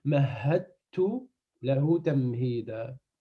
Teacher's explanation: Le del et le ta, ils sont très proches. Donc là, pour alléger la prononciation, le del, il disparaît